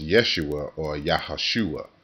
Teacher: there will be a glottal stop that you can barely hear at the end of Yeshua